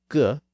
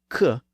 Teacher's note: sounds like the G sound G and the k sound C involve a blockage of sound in the back of the mouth in the throat region